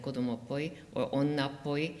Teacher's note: and attaching to nouns like codomo child kodomo poi childish so because it's a geminate p we get a heavy syllable at the end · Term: geminated p